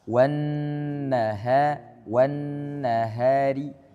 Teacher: Nunnya pendek langsung ke ha. Wan nahari.